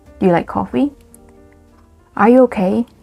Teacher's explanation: Rising intonation. So when we want to ask yes, no questions, so which can be said as close-ended questions or closed questions, you can use rising intonation.